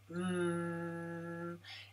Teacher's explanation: press your lips together tightly and make a humming, voiced sound. Feel the vibration from your vocal cords in the throat through the nose. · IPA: /m/